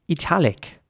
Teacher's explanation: in British English, some people would say italic, with an E sound for the I